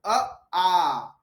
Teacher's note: जैसे ही आप अ के बाद आ बोलोगे जीभ आपकी पीछे खिसक जाएगी।